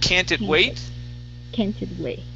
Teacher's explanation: so if you're going to drop that T, your voice has to go up